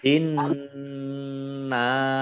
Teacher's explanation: Inna nun-nya ada tasdidnya ya, dibaca mendengung atau gunah ditahan 2 harokat.